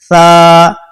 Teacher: اس کا مخرج کیا ہے, زبان کی نوک اور اوپر کے دانتوں کے کنارے سے ٹچ ہوتا ہے